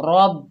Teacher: रॉ को पुर पढ़ेंगे, लेकिन आगे बा मुशद्दद है तो रॉ को बा के साथ मिलाकर पढ़ेंगे। रब, बा के ऊपर पेश बगैर खिंचे पढ़ेंगे बू, रब्बू।